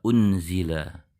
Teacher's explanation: dengan huruf Zai seperti di kata unzila kita baca dengan Ungu bunyi n yang sudah bersiap di huruf Za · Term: ikhfa